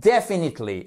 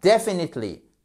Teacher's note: on met bien l'accent sur la première syllabe